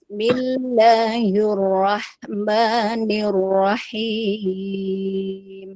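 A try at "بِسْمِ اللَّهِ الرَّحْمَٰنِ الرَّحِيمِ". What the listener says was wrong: Ini ada tar'id ya. Bismillahillah. Ini tar'id namanya. Kalau Syekh Aiman menyebutnya tar'id. Datarkan aja dulu.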